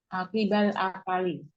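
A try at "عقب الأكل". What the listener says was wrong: Akli. Kafnya sukun.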